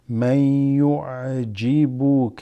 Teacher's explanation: this noon drops and goes straight into the ya